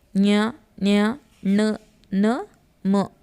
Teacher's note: ಅನುನಾಸಿಕಗಳು ಅಂದರೆ ಮೂಗಿನ ಸಹಾಯದಿಂದ ಉಚ್ಚಾರ ಮಾಡುವಂಥದ್ದು. ಞ, ಞ, ಣ, ನ, ಮ ಇವು ಅನುನಾಸಿಕಗಳು.